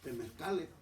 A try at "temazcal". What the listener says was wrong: estás pronunciando mal. No es temezcal, es temazcal.